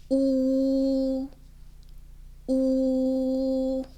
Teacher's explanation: 우리 말보다 조금 더 입을 동글게 말아서 내밀면서 우 하고 소리를 좀 더 울려서 낸다라고 해 주시면 돼요